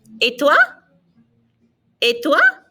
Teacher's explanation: Notice that the ET, there's no T sound. It's an A sound.